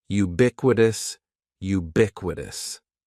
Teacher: the stress is going to be on that second syllable